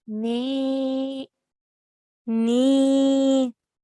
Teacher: because it's followed by a ya sakin this will be a yamada so like you did beautifully we have to stretch for two counts